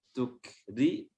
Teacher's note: huruf kafnya di sini juga memiliki sifat hams. Tukri, huruf ra-nya tarqiq tipis.